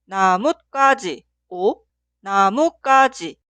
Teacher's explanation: Esta palabra se pronuncia 나뭇가지 o 나무까지, ya que la palabra posterior 가지 suena en el sonido forzado ka. En la palabra anterior debe agregar 사이시옷.